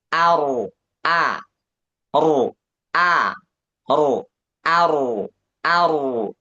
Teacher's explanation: A ketemu ro. Ro-nya tebal, tapi hamzahnya tipis.